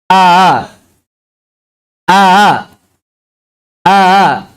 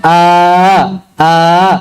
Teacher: Sifatnya antara syidah dan rikhwah. Makhrajnya antara aksal halq dan jauh. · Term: hamzah tasil